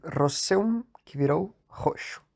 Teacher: E o S, antes de um som mais palatal, virou X, como em roseum, que virou roxo. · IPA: [ʃ]